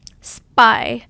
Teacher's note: when you put S before P, it helps stop the air coming out or aspiration.